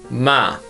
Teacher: when we pronounce English alphabet M our nose is vibrated it is nasal sound